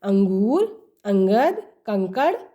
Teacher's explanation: यह स्वर के बाद आने वाला व्यंजन है जिसकी ध्वन नाक से निकलती है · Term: अनुस्वार